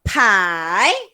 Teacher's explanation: I tu kita sebut tekan tone naik ke atas. Pai. Ke atas tu bukan sebut huruf I.